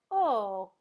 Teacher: Round my lips just a little bit. The tongue lifts up in the back a little bit, but still the tip of the tongue is at the teeth.